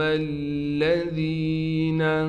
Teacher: یہاں پر میم کو بھی ہم ڈائریکٹ لام سے ملائیں گے، لام پر تشدید ہونے کی وجہ سے تھوڑا ٹھہراؤ کیا جائے گا۔ ذال کے بعد یا ہونے کی وجہ سے ذال کو ایک الف کی مقدار کھینچیں گے۔